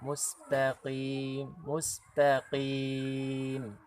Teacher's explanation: qaf itu di pangkal lidahnya bertemu dengan bagian tulang, bukan bagian tulang tapi bagian daging yang lunak di bagian belakang.